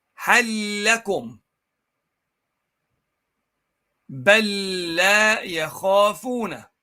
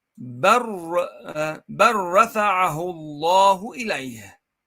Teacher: بل لا. See, you merge the first lam into the second lam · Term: idgham